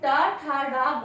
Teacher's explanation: क्योंकि जब हम टा, ठा, डा बोलते हैं तो मूर्धा से ध्वनि स्पर्श होते हुए बाहर आती है।